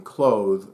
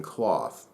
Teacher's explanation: There's the unvoiced TH as in cloth, and the voiced TH as in clothe. Of course, you also have the long O in clothe versus the short O in cloth. The E in clothe is what makes all the difference.